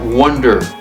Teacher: The stress, the emphasis is on the first syllable